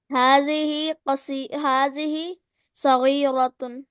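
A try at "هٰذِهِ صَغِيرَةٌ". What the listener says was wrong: सगीरतुन, माशाल्लाह, परफेक्ट।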